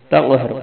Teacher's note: قاف پہ کلکلا بھی کرنا ہے اور قاف کو موٹا پڑھنا ہے اور را کو موٹا پڑھنا ہے۔